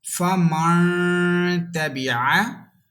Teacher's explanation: you will have to hold your sound equal to 1 second into your nose. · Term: gunna